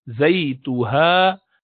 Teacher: بولیں گے یہ لین ہے. زیتوہا، ہا نیچے والے حلق سے نکلے گا